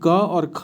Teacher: क और ख किसके अंतर्गत आएगा तो अघोष में आएगा